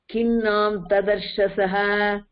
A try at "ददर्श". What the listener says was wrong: तदर्श இல்ல ददर्श